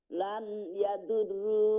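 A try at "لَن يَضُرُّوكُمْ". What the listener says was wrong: এটা আমরা লান না কই, আমরা লাই কই, লাই ইয়াদুররুকুম।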